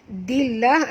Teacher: Simple ya. Dillah, alif lam di sini alif lam syamsiah, masukkan bunyi dal terus ke dalam lam ya, disertai dengan jud. · lam pada lafaz jalalah dibaca tipis kerana dal berbaris di bawah ya